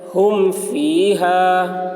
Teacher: میم ساکن کے بعد با اور میم کے علاوہ حرف آ رہا ہے، اس لیے میم کو ظاہر کر کے پڑھیں گے، اس کو اظہار شفوی کہتے ہیں۔